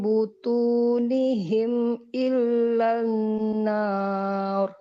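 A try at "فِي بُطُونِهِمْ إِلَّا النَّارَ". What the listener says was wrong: Hanya di sini huruf th. Butu butu gitu ya.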